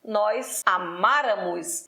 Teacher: o acento tônico está no ma que é a anti penúltima sílaba tônica forte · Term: pró-paroxítono